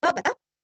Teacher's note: विसर्ग का उच्चारण हल्का सा ह